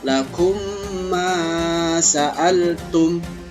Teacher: Cara membacanya yaitu dengan memasukkan mim sukun ke dalam huruf mim yang berharokat yang di depannya itu untuk mendapatkan akan terjadi suara dengungan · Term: idgham mimi